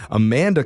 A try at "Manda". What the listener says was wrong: It's actually just Manda.